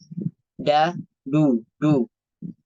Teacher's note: Kemudian dal domah dibaca tebal menyerupai huruf dhad.